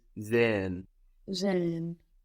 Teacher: Unless the word is pronounced really slowly or emphatically, you're not going to hear that H. It's just an extension of the vowel. But if somebody pronounces the word slowly for you, you might hear sehen.